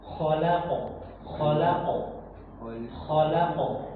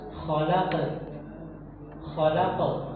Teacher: Qalqalahnya itu tebal. Tebalnya itu begini. pangkal lidahnya itu diangkat